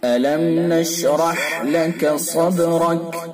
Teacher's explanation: را کو پر کر کے پڑھیں گے، پر یعنی موٹا، اور ہا کو حلق سے نکالیں گے۔